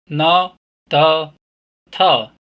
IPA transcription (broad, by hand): n, d, t